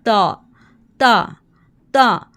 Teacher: ता में हमने ज़बान की नोक को ऊपर दांतों की जड़ के साथ लगाना है, ऊपर टिथ के रूट के साथ लगाना है।